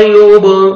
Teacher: बा पे कलकला करेंगे, डबल साउंड आएगा